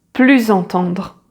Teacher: And so you make what we call in French the liaison. So we pronounce the final S like a Z together with the following word with the vowel sound as if it was one single word.